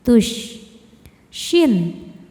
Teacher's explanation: Tafashi artinya menyebarkan angin di dalam mulut kita.